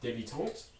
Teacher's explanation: This has both a high front rounded vowel, début, and a nasal vowel, tant.